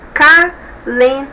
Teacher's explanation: é a penúltima sílaba que é a mais forte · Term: paroxítona